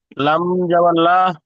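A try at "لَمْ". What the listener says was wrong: লাম মিম সাবার লা নই, লাম সাবার লা হয়, আর লাম মিম সাবার লাম, লামটা মিমের সাথে যুক্ত করে লাম, লা নই জি, একটু খেয়াল কর, লাম মিম সাবার লাম, লাম সাবার,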